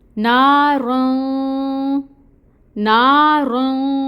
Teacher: پھر را کے اوپر زبر تنوین ہے اور اس کے بعد تا آ رہا ہے، تو یہاں پر بھی اخفا ہوگا، یعنی نون کی آواز کو ناک میں چھپائیں گے 2 کاؤنٹس کے برابر